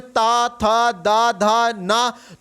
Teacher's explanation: आपकी टंग जो है वो दंत को, दांतों को टच किया करती है, दांत को स्पर्श होती है। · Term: ता वर्ग